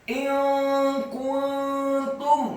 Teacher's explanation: nun yang sukun bertemu dengan huruf kaf. Hukum bacaannya adalah ikhfa, samar-samar. In kuntum, kata kuntum, kafnya dibaca dhammah tipis 1 harokat.